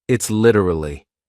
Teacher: Can you hear how that T sounds more like a D? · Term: flap T